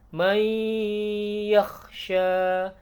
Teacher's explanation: Ada idgham bi gunnah, ditahan suaranya. Idgham artinya masuk ke huruf ya-nya, kemudian bi gunnah dengan dengung, didengungkan.